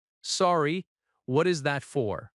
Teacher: Notice the gentle rising intonation at the end because it is a question.